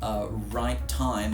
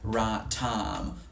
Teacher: Now some accents of English, and there's some very famous ones that do this, have a monophthong instead of a diphthong in the price vowels. So instead of saying right time, they might say right time.